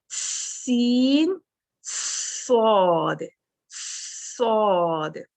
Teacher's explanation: Starting سین اور صاد کا بالکل ایک جیسا ہی ہے، اس میں صفیر کی کوالٹی پائی جاتی ہے. تو سٹارٹ آپ نے ایک جیسا لینا ہے، اس کے بعد صاد میں زبان پیچھے سے اٹھا لینی ہے، سینٹر سے کرو کر لینی ہے اور آ کی آواز اس میں لے آنی ہے۔